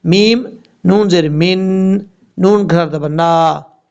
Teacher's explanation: میم نون زیر من، نون کھڑا زبر نا، نون کے اوپر شد ہے، غنہ کریں گے ایک الف کی مقدار. یہاں پر بھی غنہ ہوگا، اور نون جس کے اوپر شد ہے یہاں پر بھی غنہ ہوگا.